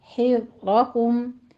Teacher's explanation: حذ میں ذال نرمی سے پڑھیں گے، سیٹی کی آواز نہیں آنی چاہیے